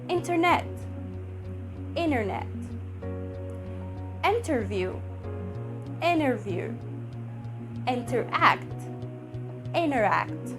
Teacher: the glottal sound or the glottal t comes in the middle of the word but this top t comes at the end of the word · whenever you find N sound comes before or after the T sound, it will be glottal.